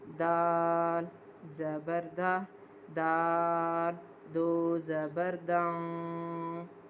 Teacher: इख्फा हो रहा है और नाक में आवाज़ छुपाई जा रही है